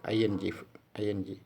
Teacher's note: back of the tongue is raised towards the soft palate soft valley is the passive articulator and back of the tongue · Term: velar sounds